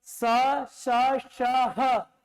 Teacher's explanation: स, श, श, ह उष्मीय व्यंजन है, क्योंकि इनके उच्चारण में घर्षण हो रहा है, और घर्षण से होता है हीट।